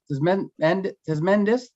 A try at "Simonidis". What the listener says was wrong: So close. It's Simonidis. So the T is silent.